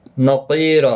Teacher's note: قاف مستعلیہ ہے، پر پڑھا جائے گا